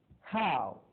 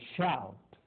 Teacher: this English sound is said slightly longer than our ow